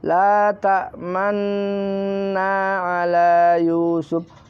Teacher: Ada yang namanya ismam. Ismam itu adalah bibir ke depan mencucu, di tengah mendengung sebagai isyarat bunyi dhammah.